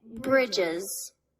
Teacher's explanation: I can't even say the plural of bridge without adding an extra I sound before the plural S. So we add the extra syllable to say bridges.